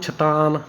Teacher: ਸ ਦੀ ਥਾਂ ਤੇ ਛਛ ਕਰਤਾ ਛਛ ਦੀ ਥਾਂ ਤੇ ਸ ਕਰਤਾ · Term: ਧੁਨੀ ਵਟਾਂਦਰਾ